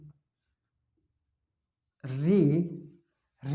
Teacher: री री जो उच्चारण होता है मूर्धन्य से होता है